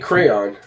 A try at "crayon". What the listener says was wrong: It's not crayon. It's not one syllable. It's two syllables.